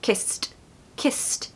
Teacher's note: Don't pronounce the E. So the ED is almost like a T sound.